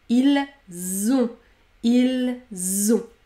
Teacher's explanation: Si je prends par exemple « ils ont », la liaison est obligatoire, je vais ajouter le son « z ».